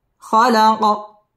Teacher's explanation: লাজি খালাক কলকলা করে পড়তে হবে কফটাকে এবং এখানে ওয়াকফ করতে হবে।